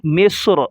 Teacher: جو زبر ہے وہ ظاہر نہیں کریں گے، جب رکیں گے اسٹاپ کریں گے۔ مصر، وقفاً مصر۔